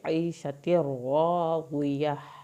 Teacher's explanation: عین کو حلق سے پڑھیں گے